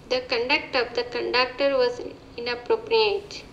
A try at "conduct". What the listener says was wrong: I'm going to say there the conduct. So on that, on the noun there, the conduct of the conductor was inappropriate. You want to put stress in the first syllable there.